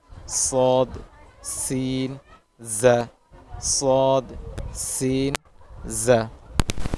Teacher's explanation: ১২ নম্বর মাখরাজ, জিব্বার আগা সামনের নিচের দুই দাঁতের পেট ও আগার সঙ্গে লাগাইয়া